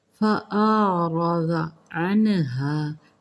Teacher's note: نون ساکن کے بعد ہا حروف ہلکی ہے، یہاں پہ اظہار ہوگا۔ عنها، انہا الف سے نہیں کرنا، عین کے ساتھ۔